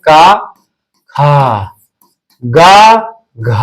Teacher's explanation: क जो होगा आपका अल्पप्राण है और ख महाप्राण है। ग आपका अल्पप्राण है। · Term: अल्पप्राण महाप्राण